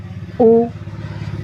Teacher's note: پیش ہونٹوں کو گول کر کے ادا ہوتا ہے، دونوں ہونٹوں کی گولائی سے ادا ہوتا ہے